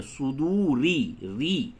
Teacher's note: اگر آپ ملا کر پڑھتے ہیں تو را کو باریک پڑھیں گے